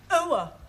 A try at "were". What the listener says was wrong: Almost. Try again, but this time, don't say ower, just were.